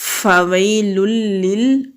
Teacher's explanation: لام کے اوپر تنوین ہے، آگے پھر لام ہے تو تنوین کے بعد لام آ رہا ہے، ادغام کریں گے۔ ادغام کہتے ہیں ملا کر پڑھنے کو، ادغام کریں گے اور غنہ نہیں ہوگا